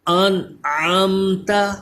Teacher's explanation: عین کی آواز بھی درست نکلے اور نون میں غنہ بھی نہ ہو. انعمت، عین پہ ذرا زور دیجئے، انعمت. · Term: اظہار